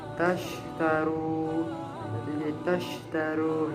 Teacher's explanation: pengucapan huruf disertakan menyebarnya angin di dalam mulut. Hurufnya hanya satu, yaitu shin. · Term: tafasisi